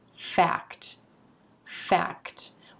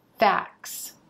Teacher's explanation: We have a very clear k-t blend at the end of this word.